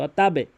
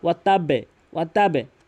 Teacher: যখন আমি ওয়াকফ করেছি তখন কলকলা হয়েছে এবং নিয়ম রয়েছে কলকলার পাঁচটি হরফের মধ্যে বা হরফটি নিচের দিকে সাউন্ড হয়